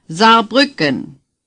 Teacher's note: the S at the beginning is pronounced like our z as in zipper